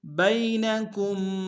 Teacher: با کو یا کے سامنے لائیں گے، یا لین بغیر کھینچے پڑیں گے۔ کاف کو میم کے سامنے لانا، غنہ کریں گے۔